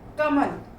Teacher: कमल बोले तो क और ल पर अधिक बल है, म पर कम है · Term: बलाघात